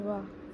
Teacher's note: जिन व्यंजनों के उच्चारण में निचला ओष्ठ दांतों को स्पर्श करता है दंतोष्ठ व्यंजन कहलाते हैं